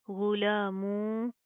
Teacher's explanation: लाम के ऊपर खड़ा जबर है, खड़ा जबर को एक अलिफ की लिमिट के बराबर खींच के पढ़ेंगे, थोड़ा सा लंबा करेंगे, ठीक है। आगे मीम वाव दो पेश, मुंह, गुला मुंह, वाव जबर वाह, गुला मुंह वाह।